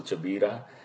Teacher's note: in the Kuwaiti dialect, K becomes CH, it gives CH sound